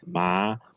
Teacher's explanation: it starts pretty high and is rising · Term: high tone